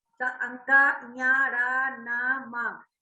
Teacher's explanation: इसको जब हम बोलते हैं तो हवा हमारे नाक से निकल रही है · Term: अनुस्वार